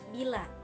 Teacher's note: Ciri-cirinya tinggi, tak bulat, depan. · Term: bunyi vokoid I